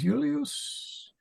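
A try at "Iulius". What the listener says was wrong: It was just one long I. You got an extra long I. last I is long.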